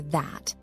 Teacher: the voiced th sound is produced with your vocal cords vibrating